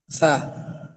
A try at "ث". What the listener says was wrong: সা। কিন্তু এই সা এরকম না, আমরা ওটা বলবো তখন তখন এই দাঁতের আগায় লাগবে আমার জিহ্বাটা, এরকম এই সা সা সা। এটা নরম হবে, হরফটা কি হবে? নরম। সা। আমি আপনার প্রথম দিন বলেছিলাম একটা কথা, যে একই জায়গা থেকে 3টা হরফ উচ্চারণ হবে। তবে একটা আছে জ, এই জ যেখান থেকে হবে, এ সাও সেখান থেকে হবে। ওইটা বলবো আমরা জ, এটা বলবো সা।